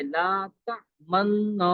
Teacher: دونوں ہونٹوں سے اشمام کریں گے۔ اشمام کا مطلب ہے اشارہ کرنا